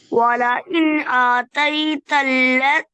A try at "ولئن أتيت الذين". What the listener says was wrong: أتيت الذين खींच के नहीं पढ़ना